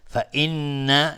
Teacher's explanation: فإن نون مشدد 2 حرکت غنه میدیم